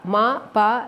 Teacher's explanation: the two Saras namely Ma and Pa are sung or pronounced or uttered by the joining of the upper and lower lips